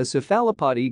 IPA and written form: ˈsɛfələpɒd (cephalopod)